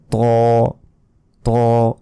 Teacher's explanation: এটা কিন্তু মোটা ভাবে উচ্চারণ হবে বাংলায় যে এমনি ত রয়েছে এর মত উচ্চারণ হবে না এটা আরো মোটা ভাবে উচ্চারণ